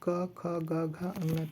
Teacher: का ख गा घा का उच्चारण स्थान हो जाएगा कंठ, क्योंकि गले पे हाथ रखने पर कंठ पे आवाज़ आती है